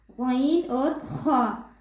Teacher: غین اور خا حلق کے اوپر والے حصے سے